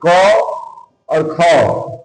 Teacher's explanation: पहला और दूसरा जो अक्षर होता है वो अघोष वर्ण कहलाता है